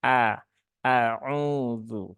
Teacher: huruf hamzah itu dia sifatnya tipis ya. Sehingga terbaca dengan a, bukan e.